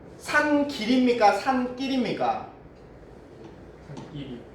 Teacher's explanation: 앞말이 울림소리죠. 뒷말이 안 울림 예사소리인데 발음을 하니까 어때요? 된 소리로 소리 나죠. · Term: 사이소리